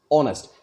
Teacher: अगर मैं ऑनेस्ट कहूँ, ऑनेस्ट का उच्चारण करें तो ऑनेस्ट, यानी पहले वाले में इतना फोर्स नहीं पड़ रहा है जितना कि नेस्ट में पड़ रहा है